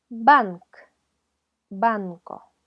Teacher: en el fa veto español vamos a aprenderlas la primera vez es un sonido que se forma con ayuda de ambos labios un golpe de los labios